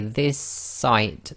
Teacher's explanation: the next word which is site so this is called germination it's effectively the merging of two sounds into one sound and you sort of hold it for a little bit longer · you're holding the s at the end of the word this and you're finishing off the sound of the s in the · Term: gemination